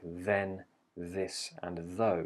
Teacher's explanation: The Voice version you have words like then this and though you can hear there's more vibration in the throat